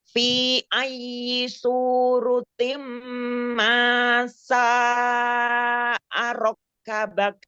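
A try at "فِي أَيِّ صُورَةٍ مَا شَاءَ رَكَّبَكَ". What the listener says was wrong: Mad jaiznya panjangkan 4 atau 5 harokat. Fi panjangkan mad jaiznya 4 atau 5 harokat.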